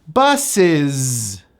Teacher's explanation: That final S is pronounced as a Z.